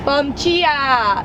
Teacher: The D-I is more like a ch sound